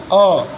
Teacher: मध्य स्वर अ, कहाँ से आता है? हमारे मुख के मध्य में से आता है, ये अ। पश्च स्वर हैं आ, उ, ओ, औ।